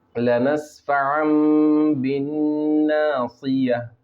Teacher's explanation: اب یہاں پر دیکھیے اقلاب ہوگا، اس لیے کہ 2 زبر کی تنوین کے بعد اقلاب کا ایک حرف با ہے، تو تنوین کی جو آواز ہے نون کی اس کو بدل کے میم میں بدل لیں گے